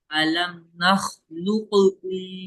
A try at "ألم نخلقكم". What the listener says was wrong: गला मत करो यहाँ पे। अलम नखलुकुम।